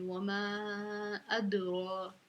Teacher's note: دال حروف کلکلہ میں سے ہے، ساکن ہے، تو ہم اس پہ کلکلہ کریں گے